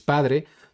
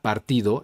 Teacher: nos Presenta una sílaba abierta lo que quiere decir que la a va a ser más larga · En cambio, la segunda palabra, partido, la vocal A es una sílaba cerrada, es decir, el sonido de la vocal A es cortada por otra consonante, que en este caso es la R, haciendo de la A un sonido más corto